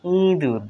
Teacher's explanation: ইঁদুর নাকের পাশে উচ্চারণ হবে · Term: অনুনাসিক